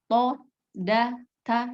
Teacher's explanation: Tempat keluarnya ujung lidah bertemu gusi atas. To, da, ta itu kan sama.